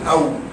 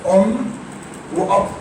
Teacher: الواو بتخرج من الشفتين مع وجود فرجه. يعني لو عطيت القلم كده هيعدي.